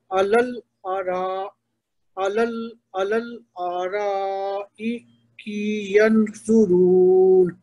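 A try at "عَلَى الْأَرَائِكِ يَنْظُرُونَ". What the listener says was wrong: یہ دیکھیں نون کا اخفا نہیں ہوا. علل ارائک ینظرون.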